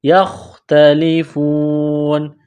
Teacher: جب وقف کریں گے تو نون کو سائلنٹ کریں گے